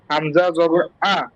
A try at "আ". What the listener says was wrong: আ না, অ হবে, এম না, আ, বুকটা খোলা থাকবে। হামজা জবর আ।